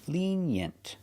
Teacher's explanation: Put the stress on the first syllable.